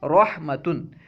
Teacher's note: Number 6، را پر زبر یا پیش ہو تو ہمیشہ پر ہوگی۔ را پر زبر ہو یا پیش ہو تو را کو ہمیشہ پر پڑھیں گے، موٹا پڑھیں گے۔